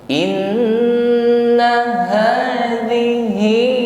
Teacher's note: ha maupun hi mengucapkannya sampaikan pada makhrajnya aqsal halqi, tenggorokan